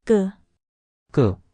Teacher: The bass sound is ku. You make the same sound as ku, but with more tension in your throat. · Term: tense consonants